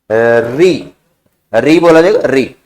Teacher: मूर्धन्य का मतलब लिख लो मसूड़ों से उच्चारण होगा